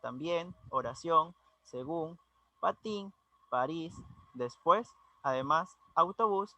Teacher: Tenemos ejemplos como las palabras también, oración, según, patín, París, después, además, autobús, y entre otras palabras que también las denominamos agudas, recordando que llevan su acentuación en la última sílaba.